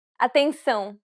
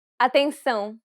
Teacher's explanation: since it's a nasal diphthong, you should pronounce it through the nose.